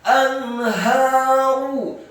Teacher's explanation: ra-nya dibaca dhammah tebal satu harokat